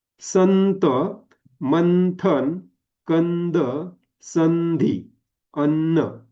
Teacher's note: प्रत्येक ठिकाणी अनुस्वार हा कसा झाला दंत गटातला अनुस्वार आला